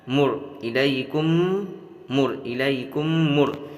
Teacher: میم کو میم سے ملا کر غنہ کے ساتھ پڑھ لیے